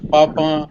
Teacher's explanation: we say papa with a nasal sound whereas it is actually written without the nasal sound